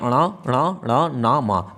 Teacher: आवाज निकलती है नाक से भी निकलेगी और मुंह से भी निकलेगी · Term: अनुनासिक